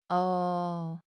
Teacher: It's an open A sound, like the A in father.